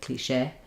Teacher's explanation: So in cliché, the stress is on the shay because it's from the French. This is the E sound.